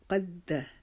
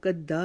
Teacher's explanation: ما قد، قد، کاف کو موٹا پڑھیں گے، دال کے اوپر تشدید آ گئی ہے اس کی وجہ سے ہم دال کو رکاوٹ کے ساتھ پڑھیں گے. قد، اس کو قدا نہیں پڑھیں گے.